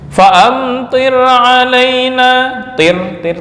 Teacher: tir itu tipis. Kenapa? Karena ini ada ro sukun sebelumnya berupa harakat kasrah.